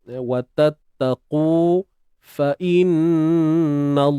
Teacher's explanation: Huruf qaf ni tebal. Huruf qaf ni kita kena angkat pangkal lidah lah. Wa tattaqu fa innallaha.